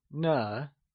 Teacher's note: Pronounced as ne , it carries the neutral tone